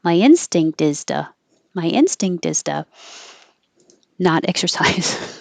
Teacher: the T will change to a D.